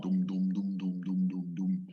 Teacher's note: It just goes on an even plane, a flat voice.